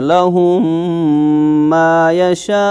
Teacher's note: तो इस कायदे को कहते हैं इदगाम शफवी, कि जब मीम साकिन के बाद दूसरा मीम आ जाए तो पहले मीम की जो साउंड होती है वो दूसरे मीम के साउंड में दाखिल कर देते हैं